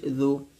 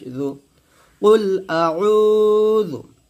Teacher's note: এই জাল পেশ জু এখানে টান দিবেন না